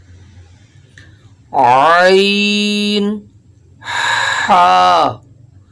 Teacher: حلق کے درمیانی حصے سے